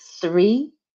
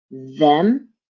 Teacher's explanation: have the voiced th and the unvoiced th sound like three the number three has the unvoiced th sound them is the voiced th sound